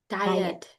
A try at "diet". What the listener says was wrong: Diet. You know, you need to emphasize the T sound.